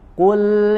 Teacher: kemudian huruf lam sukunnya tipis, ya. Kul, huruf lamnya tidak menjadi tebal seperti huruf qaf.